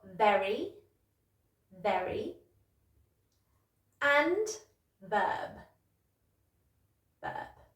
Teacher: they start with a V, which you might pronounce more like a B